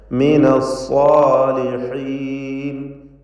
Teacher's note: അസ്സാലിഹീൻ, സ്വാദിനും ദീർഘാക്ഷരമായ അലിഫിനും തഫ്ഖീമാണ്. ഇസ്തിഅലാഇൻ്റെ ഹർഫ് ആണ് സ്വാദ് എന്നതുകൊണ്ട് അതിനെ തടിപ്പിച്ച് സ്വരഭാരത്തോടെ ഉച്ചരിക്കുക.